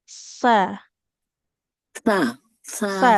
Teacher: Kalau huruf sa itu di ujung lidah ke ujung gigi dari atas.